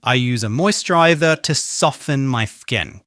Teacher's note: If you said soften with a t sound, I'm sorry, but this time you are wrong. Soften should always have a silent t.